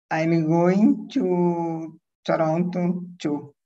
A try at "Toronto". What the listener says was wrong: Toronto. R mais anglo-saxônico.